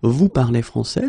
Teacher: many French-speaking people just keep the same order and raise their voice at the end